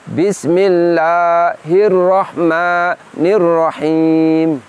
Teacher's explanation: kedua diantara kesalahan kita mengucapkan Alif mad adalah menambahkan maksud kami bunyinya seakan menambahkan bunyi huruf hamzah di ujungnya sehingga bunyinya itu di ujungnya seperti ada tekanan seperti ini Bismillahirrohmanirrohim jadi seperti ada tambahan bunyi Hamzah sukun sehingga